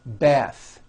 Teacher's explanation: The word bath is a noun with an unvoiced TH.